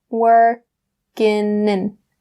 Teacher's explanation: So we'll drop that g in working, and we'll say working in. So bring that n sound from working over to in.